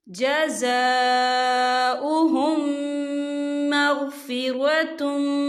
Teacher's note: और आगे देखिए जज़ाउहुम, यहाँ मीम साकिन है, मीम साकिन के बाद जो है मीम मुशद्दद वाला हरूफ आ रहा है, तो यहाँ पर इदगाम शफ़ी होगा, हम पिछले मीम को अगले मीम में मदगम करेंगे और हम यहाँ गुन्ना भी करेंगे